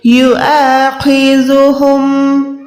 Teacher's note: خو کو موٹا ادا کریں، ذال کو نرم رکھیں